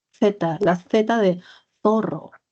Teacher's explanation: O sea, la lengua en medio de los dientes, que viene a ser la Z, la lengua en medio de los dientes, interdental.